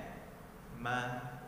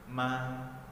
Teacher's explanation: huruf mim makharijul hurufnya adalah bertemunya bibir atas dan bibir bawah yang sebelah luar